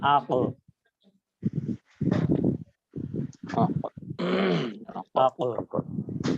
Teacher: কফটা কিন্তু কলকলার হরফ, যেটাকে একটু বাউন্স করতে হয় বা ড্রপের মতো শোনায়